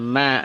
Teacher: Ma dari dua bibir yang digabungkan ma. Tidak usah ditekan.